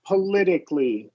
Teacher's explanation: That middle T is going to be flapped.